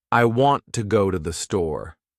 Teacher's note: The words want, go, and store are stressed. The other words I, to, and the are much faster and softer. That's the natural rhythm of English. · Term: stress-timed language